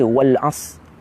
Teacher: Ra ada di hujung, tapi kita membaca wal as, hilang ra, maka kita menggugurkan 1 huruf.